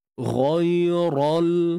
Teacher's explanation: Ya, ra ni tebal sebab baris atas.